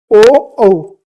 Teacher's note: तो ये हो जाएंगे कंठोष् वर्ण। कंठ और ओष्ठ यानी कि होठ को हम वृत्ताकार करके इनको बोलते हैं। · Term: कंठोष्ठ वर्ण